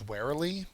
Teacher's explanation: The first syllable is accented.